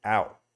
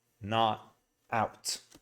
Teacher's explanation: he's saying it with a glottal T